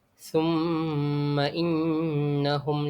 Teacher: bacaan dia perlulah didengungkan dengan kadar dua harakat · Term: mim syaddah